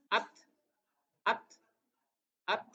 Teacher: Enggak, sebetulnya huruf ta tapi dia pecah sedikit. At harus ada sedikit mengalir desis. At buang sedikit. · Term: hames